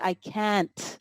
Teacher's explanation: The only thing I will say with can and can't, and it happens with native speakers too, is sometimes we don't hear the T sound for can't